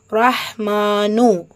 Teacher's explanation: ரொம்ப சாஃப்டா இருக்கும் பிளஸ் ஹம்ஸ் உடைய சட்டம் காற்றை வெளிப்படுத்தணும் அர்ரஹ் மா மீம்ல அலிஃப் சகீரா இருக்கு இரண்டு ஹரக்கத் அளவு நீட்டம் கொடுத்து ஓதணும் ரஹ்மானு நூன்ல தம்மா இருக்கு பெயருடைய முடிவுங்கிறதுனால சுக்குன் போட்டு முடிக்கிறோம் அர்ரஹ்மான் அளவற்ற